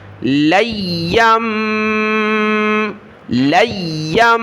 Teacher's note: کے ساتھ ملائیں گے اور ناک میں آواز پیدا کریں گے، یہاں پر جو ہے یا کو سخت کرنا ہے تشدید کی وجہ سے،